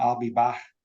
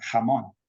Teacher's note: for any word which ends with the k sound, a K, it becomes more like the technical name, a velar fricative. So I'll be back would become I'll be back.